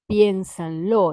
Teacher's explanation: Entonces hay como dos acentos ahí, en pien y en lo